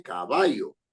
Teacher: La mayor fuerza de voz está en va. Caballo, porque uno no dice caballo ni caballo, sino dice caballo. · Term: palabra grave